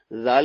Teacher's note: زال کا مخرج وہی مخرج ہے جو سا کا مخرج تھا, یعنی زبان کی ٹوپ, زبان کا سرا اور سامنے والے 2 دانتوں کا اندرونی کنارہ